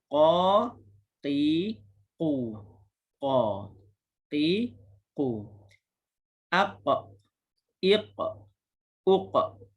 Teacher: Qalqalah dan juga bunyinya dalam. Sebab apa? Sebab ia berada pada makhraj pangkal lidah dalam.